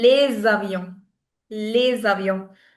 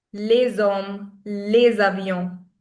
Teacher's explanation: when s connects with any vowel, the sound it produces is that of z.